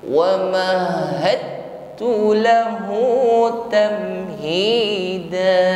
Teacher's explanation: Berikutnya di sini ada dal sukun bertemu dengan huruf ta, yakni ada hukum idgham mutajanisain. Jadi huruf dal sukun yang seharusnya qalqalah atau memantul wa mahad, maka pantulannya hilang karena langsung kita masuk idgham pada huruf ta